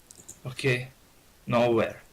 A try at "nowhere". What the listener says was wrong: That's it.